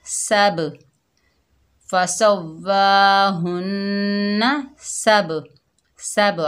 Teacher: तो मैंने आपको बताया है कि हुरूफ़ क़लक़ला 5 हैं, क़ाफ़, तौ, बा, जीम, दाल। जब वो साकिन हालत में आ रहे हों यानी तिलावत के दौरान आ रहे हों तो वहाँ जो कलकला पैदा होगा छोटा कलकला होगा, उसे कलकला सुग़रा कहते हैं।